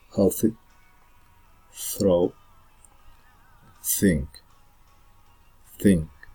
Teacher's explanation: We can see the sound is dental, because we use only the tongue and teeth